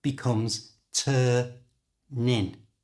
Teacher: they pronounce it as one word and the way they do this is by moving the N from the end of turn to the I at the front of in so turn in becomes Turnin